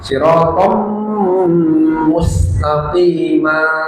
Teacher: Jadi tidak dibaca on melainkan om kemudian didengungkan dilamakan